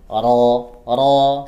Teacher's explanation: Huruf ra ditebalkan, dia berbaris fathah. Ra, ujung lidah yang digetarkan, pangkal lidah yang dinaikkan. Ra, jadi bisa tebal.